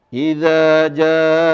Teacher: Ada intonasi yang panjang. Idza jaa janya panjang sekali, lebih dari 2 harokat.